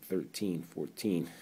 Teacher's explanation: The teen is the second syllable, so that's where you stress it